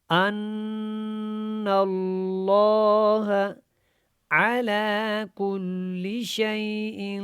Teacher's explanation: نون کو جب لام کے ساتھ ملائیں گے تو لام کو جو ہے کھڑا کر کے اور موٹا کر کے پڑھیں گے